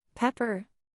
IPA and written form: ˈpɛp.ər (Pepper)